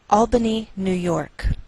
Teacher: we treat New York as one word and we place more stress on the second part York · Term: primary stress